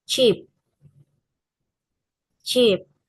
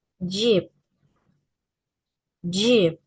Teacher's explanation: the tongue touches just behind the alveolar ridge to block airflow, then release it with friction without vocal cords vibration. For j, in the same place and manner, but the vocal cords vibrate.